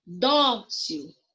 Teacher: O dó é a sílaba mais forte